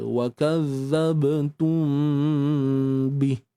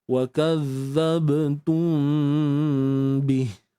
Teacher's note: kita sembunyikan mim di sisi huruf ba cuma cara nak praktik dia adalah dengan kita menutup bibir mulut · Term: Ikhfa Syafawi